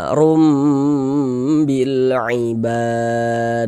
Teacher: ketika mengucapkan room-nya itu dengan merapatkan kedua bibir namun tidak menekan. Jadi bibirnya cukup rapat saja, jangan diberikan tekanan.